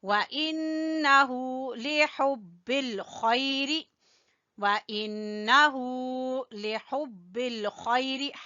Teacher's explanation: ہا کو گلے کے درمیان سے اور خا گلے کے اوپر والے حصے سے